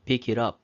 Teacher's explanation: 앞에 있는 T 발음이 약화돼서 pick it up 이런 식으로 연결돼서 발음이 되는 것입니다